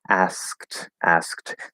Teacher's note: the d is a t here because the k is voiceless